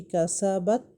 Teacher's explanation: ان حروف کو نطعیہ کہتے ہیں، اور زبان کو ہم نے باریک کر کے اپنے دانتوں کے ساتھ لگانی ہے، تبھی یہ حروف جو ہیں وہ ادا ہوتے ہیں۔ لیکن تا میں جب ہم لگائیں گے تو ہماری آواز وہاں پہ رک جائے گی